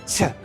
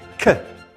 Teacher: Qattiq dag'alroq, qaysidir ma'noda yoniga h qo'shib qo'yganimiz sababi qaysidir ma'noda h, ya'ni qattiqroq h degan tovush qo'shilib chiqadi shu tovushlar bilan.